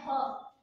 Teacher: ये सिर्फ एक कॉलम में है ह, क्योंकि सबसे ज्यादा अगर हम वॉइस और ताकत लगाते हैं जो वर्ड बोलने में, वो होता है ह. ठीक है, महाप्राण कहते हैं क्योंकि हम सबसे ज्यादा वायु इसी में यूज करते हैं